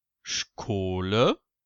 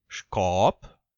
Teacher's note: Manche sprechen es sch wie im Deutschen aus, viele sprechen es aber auch schk aus, also mit einem K dahinter.